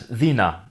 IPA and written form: ðina (dina)